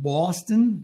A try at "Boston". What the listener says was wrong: Boston. Boston. It's more through the nose. Park the car.